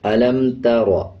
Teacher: را کے اوپر جب زبر آ جائے تو را کو پر پڑھا جاتا ہے، یعنی موٹا پڑھا جائے گا